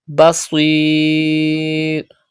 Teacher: Pronounce sad with thicker voice and stretch madde aris.